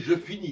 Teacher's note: on prononce pas la dernière consonne